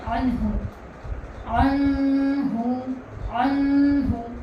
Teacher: یعنی نون ساکن کی جو آواز ہے یہ ناک میں نہیں جائے گی، یہ ظاہر ہوگی. عین نون زبر عن، ہ پیش ہو، عنہ، صرف اتنا ہی پڑھنا ہے، عنہ، عنہ، عنہ.